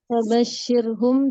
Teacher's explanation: Fabashshirhum dibaca roknya tipis karena roknya sukun sebelumnya berharokat kasroh Ustadz. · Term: terqiq atau tipis